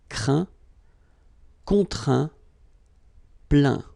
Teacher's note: final T here is not pronounced